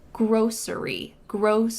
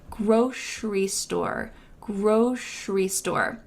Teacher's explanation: You can say grocery with an S sound in the middle. Grocery, grocery. But for me, I say grocery with a sh sound in the middle.